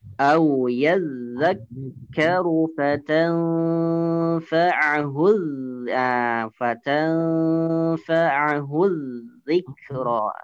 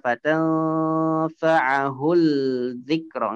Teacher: Jadi dari hu langsung ke huruf dal. Lamnya tidak dibaca, tidak fatanfa'ahul dzikra, enggak seperti itu, tapi langsung ke huruf dal ya, huruf za-nya, huruf za.